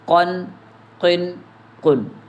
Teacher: دو نقطے والا قاف موٹا ہے، یہ حروف مستعلیہ میں سے ہے